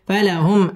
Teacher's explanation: মিম second ইজহারে খাস গুন্না ছাড়া পড়তে হবে